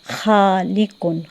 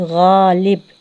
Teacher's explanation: خا اور غائن میں فرق یہ ہے کہ خا میں خراش کی آواز پیدا ہوگی، جبکہ غائن میں جو ہے خراش کی آواز پیدا نہیں ہوگی. ٹھیک ہے، یہ جو خا ہے اس میں خراش کی آواز پیدا ہوگی، جبکہ غائن میں جو ہے خراش کی آواز پیدا نہیں ہوگی.